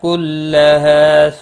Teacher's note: مد متصل ہے، چار الف کے برابر کھینچ کر پڑھیں گے۔ کلہا ہا الف مدہ ہے، ایک الف کے برابر کھینچ کر پڑھیں گے